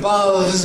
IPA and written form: bɑːðz (baths)